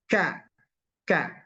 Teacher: yang kedua dia ada alhamsu ada hamasnya jadi keluar angin